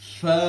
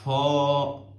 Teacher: اب فا 1 الف کے برابر ہے، تو ہم نے اس کو 1 الف کے برابر سٹریچ کرنا ہے، ف۔ بہت سارے بچے ہیں فا، یہ والا ساؤنڈ نہیں، ف، ٹھیک ہے۔